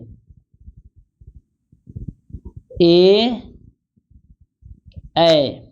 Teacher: ए ऐ यह होगा कंठ और तालू से